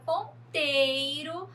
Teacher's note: na palavra ponteiro, nós temos o tei como sílaba tônica, que também é a penúltima